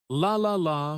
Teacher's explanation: For the L sound, the tongue touches the top of the mouth behind the teeth